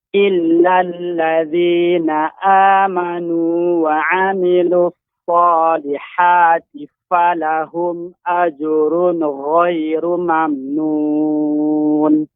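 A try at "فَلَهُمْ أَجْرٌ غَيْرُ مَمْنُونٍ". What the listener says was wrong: Dari falahum ya Pak, tadi saya mendengarkan ada ajrun gha. Jangan sampai nunnya menjadi memantul. Falahum ajrun ghairu mamnun.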